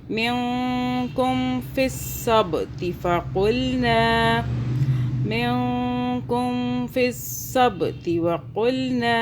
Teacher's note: हम इस नून साकिन पर इख्फ़ा करेंगे, यानी कि इस नून साकिन को 2 सेकंड के लिए छुपा लेंगे।